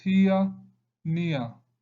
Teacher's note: That is E and A. Combination of two short vowel sound. E and A. Ia. That is here, near. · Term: diphthong